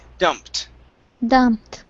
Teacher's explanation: Ed sounds like a t dumped dumped